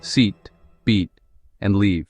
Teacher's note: notice how the vowel sound is held for a moment longer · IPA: /iː/